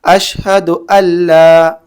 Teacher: نون کو لام میں ادغام کر دیتے ہیں یہاں پہ، ٹھیک، نون کو لام میں ادغام کرنا ہے۔